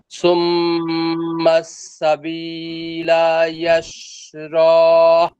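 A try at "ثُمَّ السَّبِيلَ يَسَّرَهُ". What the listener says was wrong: ইয়াস, এই যেখানে দেখেন সিন দুইটা, ইয়াস একটা হয়েছে আর একটা বাকি আছে এখনো সিন, এই যেখানে। হ্যাঁ, ইয়াস সারহ।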